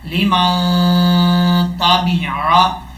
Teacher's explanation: میم کو جب نون سے ملائیں گے تو یہاں پہ غنہ بھی کیا جائے گا ایک الف کی مقدار